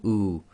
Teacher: the ooh sound too long ooh so the elongated or lengthened oo sound